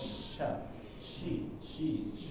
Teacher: di huruf syin ada tafasyi yang dia ketika mengucapkannya itu penuh ya